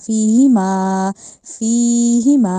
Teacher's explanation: نہیں کہنا، میم کو لمبا کیے بغیر نہیں پڑھنا، فیہما، فیہما، ایک تو فی کو لمبا کیا جائے گا، دوسرا ما کو لمبا کیا جائے گا، اور ہا کو نہیں کرنا